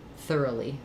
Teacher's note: In thorough, actually it's thorough, but in thoroughly, we lose that O quality for this middle syllable. It becomes a schwa